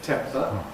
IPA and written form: ˈtempə (temper)